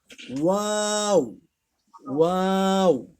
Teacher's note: শুরুতে গোল থাকবে, পরে মাঝখানে ছড়াবো, আবার লাস্টে গিয়ে গোল করব